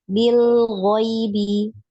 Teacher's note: jangan dipantul ya karena bukan huruf qalqalah ya. Jadi dialirkan.